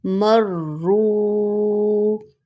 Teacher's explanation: یہاں آپ 3 لیٹرز کو ملا کر پڑھ رہے ہیں، جیسے مر رو، واو مدہ ہے، اس کو 2 سیکنڈ کے لیے کھینچیں گے